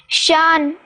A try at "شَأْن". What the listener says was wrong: بیٹی جزم ہے جھٹکے کے ساتھ، شأن۔